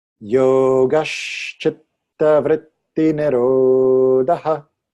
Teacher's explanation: And Sanskrit's teaching us that when there's a compound consonant, in this case a double ta, that the preceding syllable gets strong